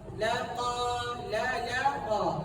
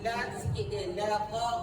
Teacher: lam ni dia huruf nipis bukaan tu bukan besar sangat